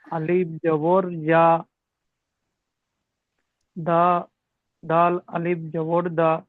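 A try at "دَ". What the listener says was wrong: দাল আলিফ নেই, কিন্তু দালের পাশে আলিফ আছে?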